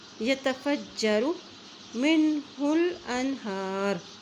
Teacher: ہا کی پیش کو لام سے ملا رہے ہیں، لام کے اوپر جزم ہے